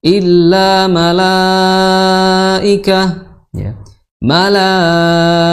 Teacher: maka di sini mad wajib apapun toriknya, ya, di Hafs Asim, maka dibacanya harus 4 atau 5, ya. Kalau di riwayat lain bisa 6, di riwayat misalnya Wars, ya, nah dibacanya 6.